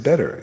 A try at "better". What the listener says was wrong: When you say better, it sounds like butter.